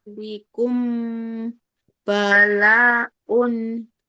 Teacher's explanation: mim sukun ketemu ba, maka bunyi mimnya lama